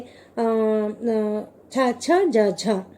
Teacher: చావర్ణమును పలికేటప్పుడు నాలుక నోటిలోని తాలు స్థానాన్ని స్పర్శిస్తుంది మరియు తర్వాత గాలి సంఘర్షపూర్వకంగా బయటికి కూడా వెడలుతుంది కనుక చ అనేది స్పర్శ సంఘర్షి.